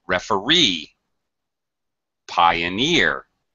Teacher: actually the primary stress is on the e sound